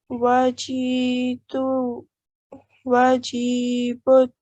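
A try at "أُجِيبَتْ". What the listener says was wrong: So it's U. It starts from U.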